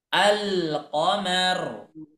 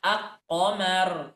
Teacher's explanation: Kalau qamariyah lamnya ditulis tetapi ikut terbaca.